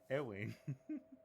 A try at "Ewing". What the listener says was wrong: Ewing? Ewing. It is right. It's just that you add the Elmer Fudd-esque lisp to it when you say Ewing.